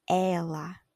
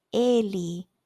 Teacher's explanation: the word for Ella like she it's with an open E like Ella but the word for he Eli then it's closed Ella Ellie yeah and it it does make a big difference